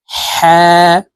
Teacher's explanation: হা হলকের মধ্যখান থেকে উচ্চারণ করতে হবে